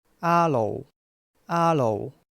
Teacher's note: We don't have the R sound in Cantonese, so we use the L sound instead.